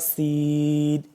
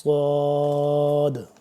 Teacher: سین تھوڑا باریک ہوتا ہے اور صاد کو موٹا.